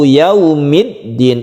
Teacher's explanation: ini kita lemaskan yau menjadi u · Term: layin